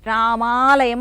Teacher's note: కూడా అదే వర్ణం కింద మనం భావించాలి ఇక్కడ రామ ప్లస్ ఆలయము అన్నప్పుడు మొదటి అ కి తర్వాత రెండో అ కి రెండు కలిసిపోయి మనకి దీర్ఘం అనేది వస్తుంది వచ్చింది రామాలయం అన్నాం మ కి దీర్ఘం రామాలయం ఇక్కడ సూత్రం ఏంది ఆ